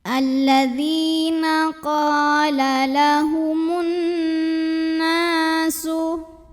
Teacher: Karena alif lam bertemu huruf syamsiyah yaitu nun. Maka alif lam ini dilewatin, tidak perlu dibaca. Jadi dari mim langsung kita masukkan ke nun atau diidghamkan. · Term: alif lam syamsiyah